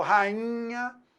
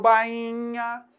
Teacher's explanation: Esse I, ele está graficamente sozinho, mas está contaminado pela nasalização do NH. Então, foneticamente, a gente percebe que esse som, ele está agora nasalizado.